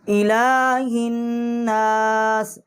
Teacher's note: یہ لام جو ہے اس کے اوپر کھڑی جو زبر ہے اس کو ہم ایک الف جتنا کھینچیں گے